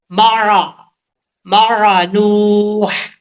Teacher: عین کو پڑھتے وقت عین کے مخرج سے عین کو نکالنا ہے، حمزے کی آواز نہیں آنی چاہیے